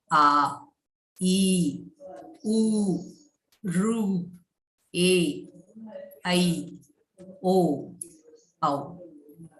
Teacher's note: Dirgha Swaraha takes the double time that of the Rasva Swaraha. 2 matra kala time is required for the pronunciation of Dirgha Swaraha. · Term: long vowel